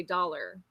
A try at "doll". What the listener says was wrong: Doll. Not dole. Dole is D-O-L-E. Doll. D-O-L-L.